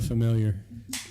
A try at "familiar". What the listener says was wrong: No, familiar. Roll your R's, bro.